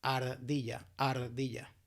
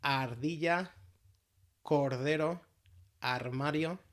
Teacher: one simple tap in the top of the mouth, right behind your teeth. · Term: flap or tap